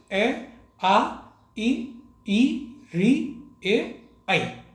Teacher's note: जब इनका आप उच्चारण करेंगे तो आपके ओठों की आकृति वृत्त या गोले जैसी नहीं बनेगी। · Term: अ वृत्ताकार स्वर